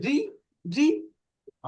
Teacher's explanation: রি যখন কাসরা দিয়ে উচ্চারণ করবো একটু পাতলা করে পড়তে হবে